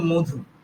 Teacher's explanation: রাঢ়ী উপভাষাতে শব্দের শুরুতে কিছু কিছু ক্ষেত্রে অ থাকলেও সেটা ও এর মতো উচ্চারণ হয়।